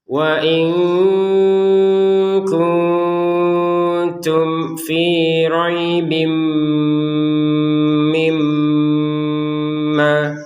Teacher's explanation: tanwin bertemu mim ya dimasukkan kepada mimnya sehingga terbacanya robim disertai dengungan. Mim bertasdid juga dengungan.